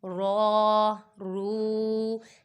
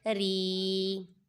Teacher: زبر اور پیش والا پر پڑا جائے گا، جبکہ جو زیر والا ہے وہ باریک پڑا جائے گا